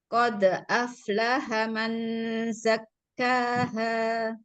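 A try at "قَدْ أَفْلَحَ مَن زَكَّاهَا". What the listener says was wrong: Sedikit ditahan Bun ketika nun bertemu zai. Mazah. 3 ketukan. Mazakkaha.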